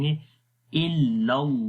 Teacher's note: پہلے والے لام کو نہیں موٹا پڑھیں گے، دوسرے والے لام کو خالی موٹا پڑھیں گے، کیونکہ گرین جتنے بھی کلرز آپ کو نظر آئیں گے ان کو آپ نے موٹا پڑھنا ہے.